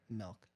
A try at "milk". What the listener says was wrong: I don't know why it sounds like you're saying milk, like MELK.